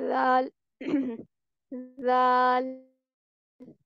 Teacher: दाल में हम क्या पढ़ रहे हैं कि जुबान की नोक को ऊपर वाले सामने के 2 दांत उनकी जड़ से लगाकर बारीक आवाज में पढ़ेंगे